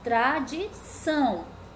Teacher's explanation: Sílaba tônica, tradição. O são é a sílaba tônica, então ela é oxítona, tá? Porque é a última sílaba.